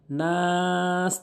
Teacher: এখানে নাস তিন আলিফ টেনে পড়বেন